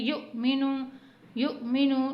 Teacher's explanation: حمزہ کے اوپر جزم ہے تو یہاں پہ ہم جھٹکا دے کے پڑھیں گے